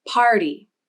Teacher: Notice the jaw drop for the beginning of the vowel, and the tongue is low in the mouth. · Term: AR vowel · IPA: /ɑɹ/